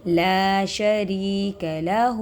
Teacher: وحدہ لا شریک لہ، دیکھیں یا ساکن سے پہلے را کے نیچے زیر یا مدہ، اس کو کھینچیں گے